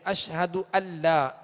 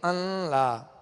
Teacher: تو نون کو لام میں داخل کر دینا، یہاں غنہ ظاہر نہیں ہوگا.